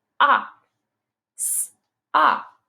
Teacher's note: the short o sounds like ah like in sock